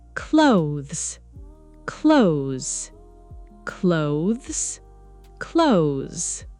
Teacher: many learners pronounce two clear syllables, but native speakers usually shorten it. It sounds almost like clothes.